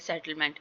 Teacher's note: जैसे कि सेटलमेंट, सेटलमेंट कि सेटल में ई जो साउंड है वो स्ट्रॉन्ग आ रहा है, इसको ज्यादा इसकी साउंड आ रही है, और मेंट में ई जो साउंड है वो बिल्कुल लो स्लो आ रहा है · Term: वीक साउंड